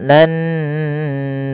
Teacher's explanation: menahan suara memasukkan ke rongga hidung kita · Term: ghunah